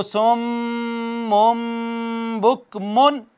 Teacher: میم ساکن کے بعد با آ جائے تب بھی آواز کا اخفاء کر لیتے ہیں۔ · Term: اخفاء شفوی